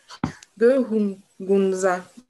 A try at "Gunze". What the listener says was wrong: C'est pas le A, c'est E. Gunze.